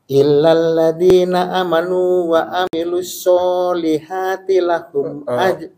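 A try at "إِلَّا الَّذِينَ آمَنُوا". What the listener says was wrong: Amanu panjang. Ya, illal ladzina. Ulang lagi.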